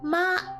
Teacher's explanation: And so this one is kind of simple in the way that you have to do a flat sort of tone, not like neutral tone, because neutral tone is this one here. But for first tone, it's basically like a flat tone.